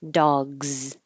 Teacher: If your voice is on, dog, leave it on and your S will sound like a Z